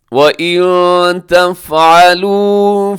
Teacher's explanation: یہاں نون ساکن کی بعد تا ہے تو یہاں پہ اخفا ہوگا